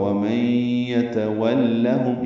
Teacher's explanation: نون ساکن کے بعد یا آنے کی وجہ سے ادغام ناقص ہے، غنہ ہوگا۔ وَمَن يَتَوَلَّهُم، یا تا جلدی ادا کریں گے، واو کو لام سے ملائیں گے، لام پر زبر ہے، جلدی پڑھیں گے، میم ساکن پہ اظہار شفوی ہے۔